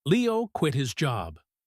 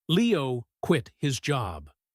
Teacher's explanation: He puts the stress on the word quit.